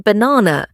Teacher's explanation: same as Turkish B, lips pressed together then release.